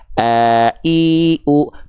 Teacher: Hamzah itu dilafalkan dari bagian tenggorokan paling bawah.